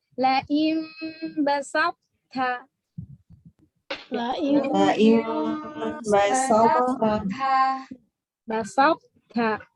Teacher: to sukun bertemu ta maka qalqalahnya hilang namun tetap tebal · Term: idgham naqis